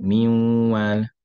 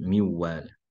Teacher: For hafs, you'll have miwal with hunna of the noon going into the meme.